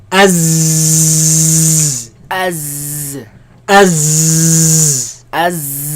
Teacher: There's a lot of commotion, a lot of air, a lot of movement of air between the tongue and the teeth.